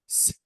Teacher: if you want to touch your thrat while saying s s no vibration so this is voiceless